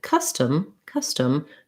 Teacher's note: in custom custom you can hear i don't say that o as an ah or an o it actually sounds like an uh